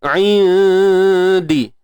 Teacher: untuk nun mati bertemu dal ni kita kena dengung nipis sebab dal huruf yang nipis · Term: ikhfa haqiqi